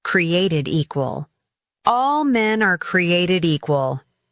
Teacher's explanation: pronounces created equal with crystal clarity and strong emphasis on both created and equal